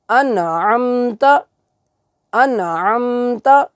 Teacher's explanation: انعمتا جو ہے اس تا کو ہم لمبا نہیں کریں گے